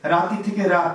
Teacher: রাতি থেকে রাত কি হয়েছে? ইকারটা কমে গেছে।